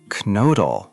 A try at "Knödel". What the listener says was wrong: Close. The O sound is tricky for English speakers. It's like saying E, but with rounded lips. Kind of like the U in the French word bleu. Knödel. Knödel. Knödel.